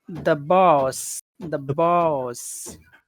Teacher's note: the is short and boss is pretty long